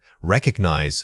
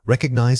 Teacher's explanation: Recognize stressing the second syllable. A frequent error is placing the beat too early.